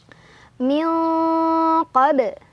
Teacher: nun sukun dibaca samar sambil berdengung. Nah, dengungannya lebih besar dibandingkan dengan samar-samarnya. Kenapa? Karena qaf sudah jauh dari nun. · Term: ikhfa ab'ad